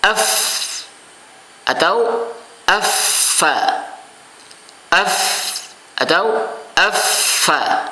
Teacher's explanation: makhrajnya adalah ujung dua gigi seri bagian atas dengan bibir bagian bawah. Af, ya, seperti itu.